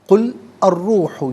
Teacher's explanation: لام کو را کے ساتھ ملائیں گے، درمیان میں سے الف یعنی حمزہ کو حذف کیا جائے گا، یہاں بھی را کی آواز ہوگی۔